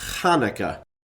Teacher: Really, Hanukkah with a soft H sound is not how this word is properly pronounced. It would be pronounced with a throat-clearing guttural KH sound. So rather than Hanukkah, it would be Hanukkah.